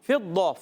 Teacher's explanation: ضاد پہ زبر حرکتیں نہیں کھینچیں گے، فا کی زیر کو بھی نہیں کھینچیں گے، ضاد کا زبر بھی نہیں کھینچیں گے، ضاد کو موٹا رکھنا ہے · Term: ایکسٹرا موٹے حروف